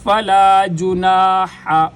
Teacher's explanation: ہا گلے کے درمیان سے، ہا اور عین دونوں گلے کے درمیان سے ادا ہوتے ہیں